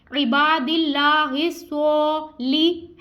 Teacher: दिल्ला हिस्सा, स्वाद के ऊपर खड़ा ज़बर है हम इसको खींच भी रहे हैं और स्वाद हरूफे मुस्तालिया जिसको हमने पूर यानी मोटा अदा करना है